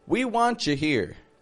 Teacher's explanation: Want and you. Again, blending those sounds together from want and you to be just a want ya. We want you here.